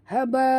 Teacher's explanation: nun mati bertemu ba. Kita tukarkan bunyi nun mati kepada bunyi mim. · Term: iqlab